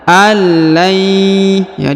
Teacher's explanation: huruf nun sukun bertemu ya bertasdid, maka kita dengungkan dan kita samarkan. Nun sukunnya melebur menghilang ke huruf ya bertasdid. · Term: didengungkan